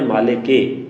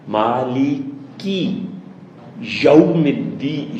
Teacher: میم کے اوپر چونکہ کھڑی زبر ہے، کھڑی زبر کی آواز تھوڑی لمبی کرتے ہیں